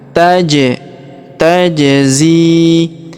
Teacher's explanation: Huruf ja berharakat sukun kita pantulkan. Taj tajzi. Kemudian huruf zi kita panjangkan dua harakat karena ya sukun di depannya.